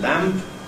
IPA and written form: læmp (lamp)